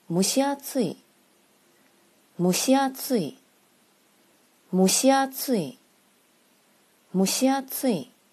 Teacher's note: 声调是两边低中间高